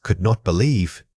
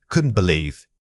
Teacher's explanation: We often overarticulate auxiliary verbs like could or should. The correct natural rhythm requires these words to contract and link immediately. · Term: Contraction link